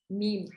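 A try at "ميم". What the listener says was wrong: Yeah, meme. You can make it a bit longer. Meme.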